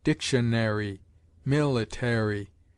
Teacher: Americans incline to give every syllable of a written word a distinct enunciation, and the popular habit is to say dictionary, military, with a secondary accent on the penultimate , instead of sinking the third syllable, as is so common